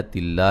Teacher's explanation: لفظ اللہ کو باریک پڑھیں گے، اس سے پہلے حرف پر زیر ہے